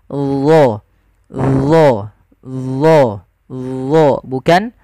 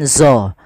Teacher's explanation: Melekatnya lidah-lidah kita ke langit-langit atas, dan isti'la adalah pangkal lidah kita terangkat · yang membedakan adalah sifat huruf daripada huruf dho itu yang dia tebal, yaitu itbaq dengan isti'la.